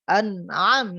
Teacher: Nah, di sini ada huruf ain ya. Ain itu termasuk al-halq, yaitu tenggorokan.